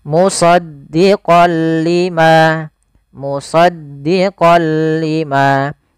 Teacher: Awalnya kalau kita baca musaddiqan, karena bertemu dengan huruf lam, tanwinnya masuk ke huruf lam. Suara n-nya dihilangkan menjadi diganti menjadi huruf lam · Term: idgham bila gunnah